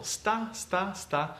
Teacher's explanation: these consonants go one after the other there is no vowel in between them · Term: cluster